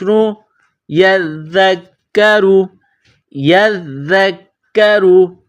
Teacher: را کے اوپر جب زبر یا پیش آ جائے تو را کو موٹا پڑھتے ہیں، اور را کے نیچے جب زیر آ جائے تو را کو باریک پڑھتے ہیں۔ یہاں را کے اوپر پیش ہے تو را کو موٹا پڑھیں گے۔